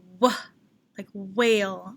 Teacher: There's a little breath after the W. It's a combination.